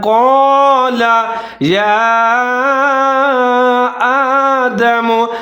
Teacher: یا کے اوپر چھوٹی مد ہے، اس کو لمبا پڑھیں گے۔ الف کے اوپر کھڑا زبر ہے، ایک الف کے برابر لمبا پڑھیں گے۔